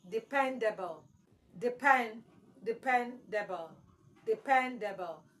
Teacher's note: So your stress should be on the second syllable, pen.